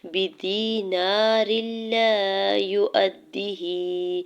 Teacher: یا ساکن سے پہلے دال کے نیچے زیر یا مدہ ہو رہا ہے، دو حرکت کھینچ کے ادا کریں گے · را کے نیچے دو زیر کی تنوین کو لام مشدد کے ساتھ ملاتے ہوئے ادغام بغیر غنہ کے رول اپلائی ہو رہا ہے